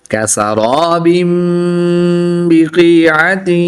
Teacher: दो ज़ेर की तनवीन के बाद या हरूफ यरमलून में से है तो यहाँ पर इदगाम माल गुन्ना होगा, यानी गुन्ना करके पढ़ेंगे।